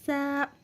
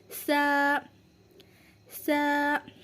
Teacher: ज़बान की नोक और दांतों के किनारे से मिलकर अदा होता है।